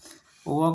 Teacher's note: व का उच्चारण दंतोष्ठ से होता है